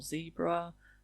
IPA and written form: ˈziːbrə (zebra)